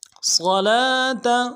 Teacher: صاد اگلا صاد جو ہے صاد کو موٹا ادا کریں گے، لام کے اوپر کھڑا زبر ہے، ایک الف مقدار میں کھینچیں گے